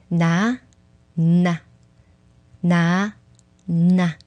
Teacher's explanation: It is almost like the tongue quickly touched the gum ridge instead of hanging around.